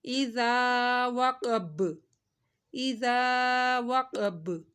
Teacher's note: با ساکن ہو جائے گا تو با کے اوپر کلکلا ہو جائے گا